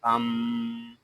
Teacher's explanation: میم شدد ہے، اس کو ہمیشہ غننے کے ساتھ پڑھتے ہیں. اس کو ام ایسے نہیں پڑھیں گے، اس کو پڑھیں گے ام.